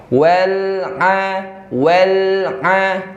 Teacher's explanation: Kalau ain di mana makhrajnya? Di tengah tenggorokan. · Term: huruf ain